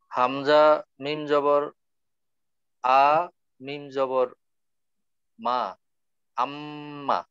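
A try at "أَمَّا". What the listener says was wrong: হামজা মিম জবর আম, আগে আম হবে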